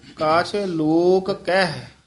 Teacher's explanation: ਦੋਵੇਂ ਕਕੇ ਬੋਲਨੇ ਕਿਤੇ ਇੱਕ ਕਕਾ ਬੋਲ ਜਾਂਦੇ ਨੇ